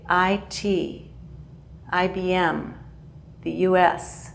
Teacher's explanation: English language training we pronounce each letter that's called an initialism with an initialism the last initial has the most stress